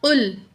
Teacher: آگے پڑھیں گے، قاف پیش لام قل، قاف کی پیش کو لام جزم سے ملا کے پڑھیں گے، قاف پیش لام قل، قاف کو موٹا کر کے پڑھیں گے، 2 نقطوں والا قاف ہر حال میں موٹا پڑھا جائے گا